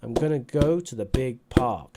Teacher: big is a content word so that adds another stress